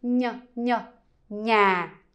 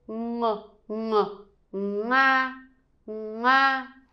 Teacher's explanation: one is like kind of like the sound is inside your mouth, and the NG, the sound is like back in the throat, like ng, ng.